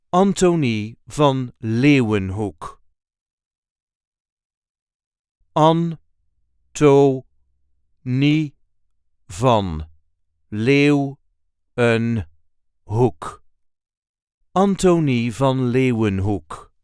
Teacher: There is a light emphasis on the first syllable of the first name and the first syllable of the last word.